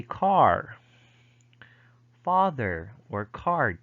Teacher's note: in american english however r is pronounced in final and pre-consonantal position